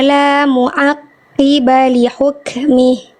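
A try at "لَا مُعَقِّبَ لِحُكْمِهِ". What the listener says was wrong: Tekan lagi dikit ainnya. Kurang duduk, kurang belum utuh nyawa ainnya. Mu'aqqiba ya. Mu'a. Nah, jadi ainnya itu masih agak kaku. Mu'a. Lebih semut lagi. Mu'aqqiba.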